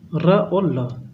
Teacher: और वर्त से र और ल, ये क्या होता है, जीभ जो है मसूड़ा टच करता है, जीभ से, जीभ मसूड़े से टच करेगी।